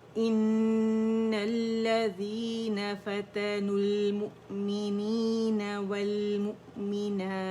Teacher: اور مد عارض وقفی بنے گی، 4 کاؤنٹ سے کھینچیں گے